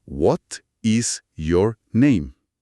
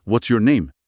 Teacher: Comparaban la forma poco natural, muy silábica, de decir, por ejemplo, What is your name?, pronunciando cada palabra con igual fuerza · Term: sentence stress